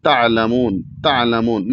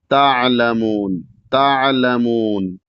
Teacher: عام طور سے لوگ اس میں غلطی کر جاتے ہیں کہ اس کو جھٹکا سے پڑھ جاتے ہیں، تعلمون تعلمون نہیں، تعلمون تعلمون اس طریقے سے آرام سے حلق سے عین کو ادا کرنا ہے، ساکن بھی ہو اور جھٹکا بھی نہ ہو